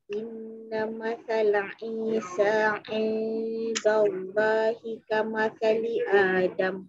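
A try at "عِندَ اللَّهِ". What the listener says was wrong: Ah, baik-baik, jangan indallah. Indallah. Tebal kalimah Allah.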